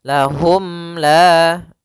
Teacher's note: suara mimnya tidak boleh ditahan, tidak boleh lahum la, tapi akan tetapi dia harus jelas dan langsung saja. Lahum la sambil menyempurnakan daripada huruf mimnya. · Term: izhar syafawi